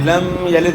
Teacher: میم ساکن میں جو ہے نا غنہ نہیں ہوگا، میم ساکن کے بعد دوسرا میم آ جائے یا با آ جائے تو تب جو ہے غنہ کرنا ہوتا ہے، ورنہ جو ہے اظہار ہوگا، یعنی غنہ نہیں ہوگا۔